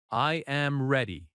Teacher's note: Your voice goes down at ready. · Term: Falling tone